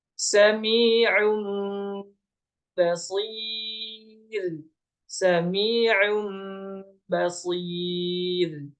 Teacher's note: Nun sukun bertemu dengan ba atau bertemu dengan huruf ba, maka nun sukun itu dirubah menjadi mim. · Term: iklab